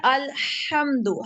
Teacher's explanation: ہا ہے یہ ہا جس پہ ہمارے سانس کی آواز آتی ہے